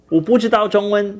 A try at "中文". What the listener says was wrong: So his 中文 was both the first tone, the high level tone. So it should have been 中文.